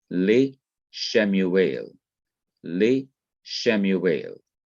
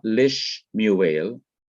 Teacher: the second shiva remains vocal that is it is to be pronounced as it was before the preposition was attached so it's not lis muelle as we might think from another